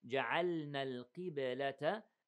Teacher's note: the qaf is heavy but not all the way, the lowest level of heaviness.